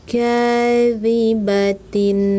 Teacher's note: Kadibatin, mad thobii, dua hitungan